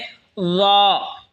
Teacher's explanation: ল জিহ্বার আগা সামনের ওপরের দুই দাঁতের আগার সঙ্গে লাগায় উচ্চারণ হবে ল। ল এই সা যেখান থেকে উচ্চারণ হয়েছে সেখান থেকেই জাল উচ্চারণ হবে, সেখান থেকেই ল উচ্চারণ হবে।